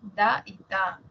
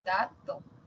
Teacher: Tenemos los dentales, da y ta. Por ejemplo, la palabra dato aparece en las dos.